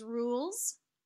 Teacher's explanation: this word is rules it's a voiced s sounds like this is a little bit like a Z we